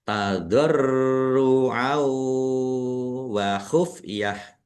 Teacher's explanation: Fathah tanwin bertemu dengan huruf wawu, bacaan idgham bi gunnah, masuk dengan mendengung. Langsung masuk ke huruf wawu, fathah tanwinnya tidak dibaca dan mendengung wawu, ditahan biar tampak mendengungnya.